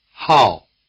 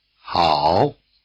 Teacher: the falling tone drops sharply through your full range, while the low tone spends most of its time at the bottom. It helps that the falling tone is the shortest tone and the low tone is the longest.